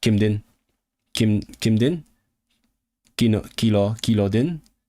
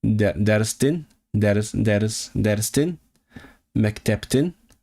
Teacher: Harmonizes in voicing. So, it's only din and tin.